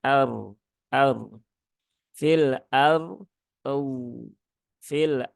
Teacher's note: Dod jadi bacanya bukan Fil Ar ya bukan fil ya dan yang perlu diketahui rnya juga dibaca tebal